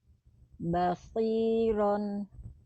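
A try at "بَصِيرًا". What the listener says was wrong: Oke, baik.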